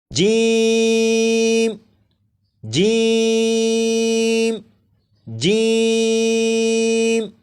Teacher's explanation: जीम को 3 अलिफ के बराबर खींच कर पढ़ेंगे। जैसे जीम जीम जीम, 4 मरतबा आप पढ़ेगा।